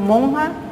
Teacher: además nasalizamos la vocal que antecede a la consonante nasal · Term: nasalización